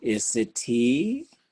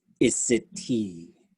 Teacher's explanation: sometimes it's our instinct as an English language speaker to go isitee, right? To do that thing, that rising tone.